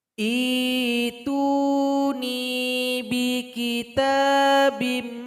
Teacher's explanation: Kita mulai dari hamzah wasal. Ketika memulai harus ada ibdal. Hamzah sukun ganti dengan ya sukun. Baris dari hamzah wasal kasrah.